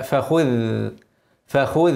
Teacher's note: فخذ الذال اوعى تدخل لسانك جوه تغير الحرف لا فخذ فخذ والخاء مفخمه قبلها اوعى تفخم الذال الذال مرققه